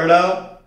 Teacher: अब गौर करिए जब जीभ इनका उच्चारण करती है तो जीभ मूर्धा को स्पर्श करती है अड़, लेकिन बहुत झटके के साथ बाहर आती है। यही कारण है झटके के साथ वहां से उस स्थान को हटती है या फेंकती है अपने आप को, अग्रभाग को, तो इसलिए इसका नाम रखा गया उच्छिप्त व्यंजन। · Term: उत्क्षिप्त व्यंजन